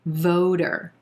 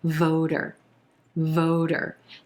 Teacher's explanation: Notice that T becomes a flap T, which sounds like a soft D